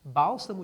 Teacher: a sílaba tônica é a antepenúltima posição bálsamo gente é uma proparoxítona